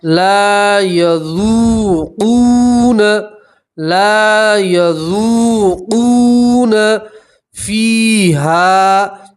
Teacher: اور آپ 2 زبر کی تنوین کے اوپر وقف کریں گے تو 2 زبر کی تنوین کو ایک الف اور ایک زبر سے پڑھیں گے تو پڑھیں گے احقابا، احقابا، لابثین فیہا احقابا، لابثین فیہا احقابا، لا یذوقون، لا یذوقون فیہا، دیکھیں یہاں لام کے ساتھ الف مدہ ہے اس لیے آپ ایک الف کے برابر کھینچیں گے · واو مدہ میں بھی آپ ایک الف کے برابر کھینچیں گے